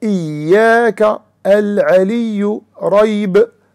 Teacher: it should not be pronounced with complete contact between the middle of the tongue and the roof of the mouth to an extent that the sound does not pass through. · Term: letter ya